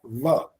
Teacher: व दांत और ये ओठ दोनों मिल रहे हैं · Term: दंतोष्